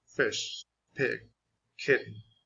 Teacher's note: La I suena como entre E y I.